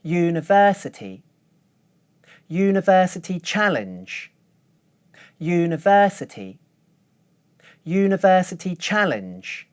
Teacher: when I say university challenge, I use one stable pitch for the word university and go up in pitch at the beginning of the word challenge